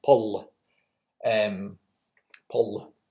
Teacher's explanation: pull was the pronunciation in Old Irish with a long L